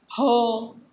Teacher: जेव्हा आपण ह म्हणतो ना तेव्हा फुफुसातील हवा तोंडान बाहेर जोरात फेकली जाते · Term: महाप्राण